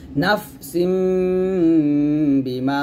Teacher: একটা মিম আসছে তো এই মিমটা থাকলে কি করতে হবে এখানে নুন সাকিনের উচ্চারণটা মিম সাকিনের মত পড়তে হবে · এই নুন সাকিনটা মিমের মাধ্যমে গুন্নাটা করবো